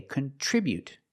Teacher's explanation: With the verb, we say contribute. We put the stress on the second syllable.